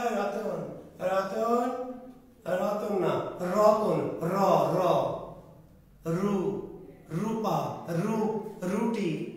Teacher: র ধ্বনিটা উচ্চারণ করতে গেলে আপনাকে জিহ্বার মাথাটা কি করতে হয়, একটু কাঁপাতে হয়, কাঁপান, তাহলে উচ্চারণটা সুন্দর হয়। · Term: কম্পনজাত বর্ণ